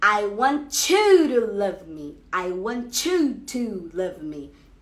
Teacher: É esse tch, tá? Você vai juntar um t com um y, ele vai virar um tch. E aí a palavra, a frase vai ficar, I want you to love me.